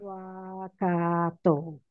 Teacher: A has a diacritical mark there before a double consonant, you still drag that A. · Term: long A